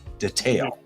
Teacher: should be on the uh second syllable in classic American but UK pronounces it with the emphasis on the first syllable